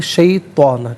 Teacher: شیطان ہے، تو کو پر کر کے پڑھتے ہیں، شیطان تو کو باریک نہیں پڑھتے